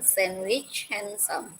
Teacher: yeah sandwich handsome remember in this word though there are d the d is silent in both cases